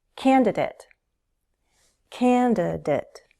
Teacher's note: 3 syllables, and stress is on the first.